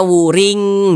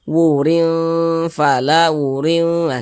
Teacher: kita dengungkan atau kita gunahkan jadi suaranya itu kita tahan kita panjangkan sejenak